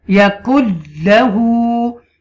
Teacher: you make idgham here without gunna